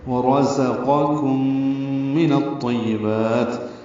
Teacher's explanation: کم میں غنہ ہے، ادغام شفوی مع الغنہ ہے، نون کو طا سے ملائیں گے، الف لام نہیں پڑھیں گے۔